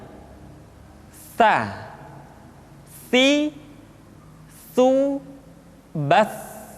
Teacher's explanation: Tsa dikeluarkan dengan menyentuhkan ujung lidah kita dengan dinding dua gigi seri bagian atas. diucapkan dengan suara dan nafas yang terdengar mengalir. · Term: huruf tsa, huruf sa